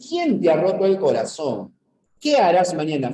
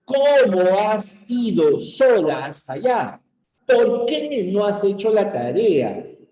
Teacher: las interrogativas parciales empiezan con una fuerza de voz con un enfático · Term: cadencia